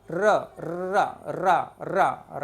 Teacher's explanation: जो है वाइब्रेट होगा। र र र र रा को बोलकर देखो, आपको वाइब्रेट होगी आपकी जीवान का अग्रभाग। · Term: लुंठित या प्रकंपित